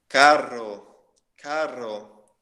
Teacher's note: Quando que aparecem dois R's em uma palavra, a gente pronuncia também a gente vibra a língua.